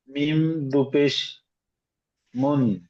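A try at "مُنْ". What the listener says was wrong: মিম দুপেশ হবে না,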